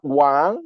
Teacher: pronounced at the second tone, which is the Chinese word for king